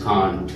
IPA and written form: kɑːnt (can't)